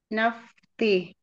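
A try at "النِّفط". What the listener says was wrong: Nih. Nunnya kasrah. Nif. Itu ada kasrah di bawah tasydid.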